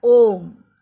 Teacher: इसमें ह्रस्व का 3 गुना समय लगा हुआ है